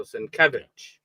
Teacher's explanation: the accent is on the middle uh syllable there